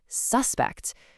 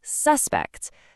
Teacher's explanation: You can really hear that punch on the first part, can't you? Suspect. That emphasis clearly points to a person.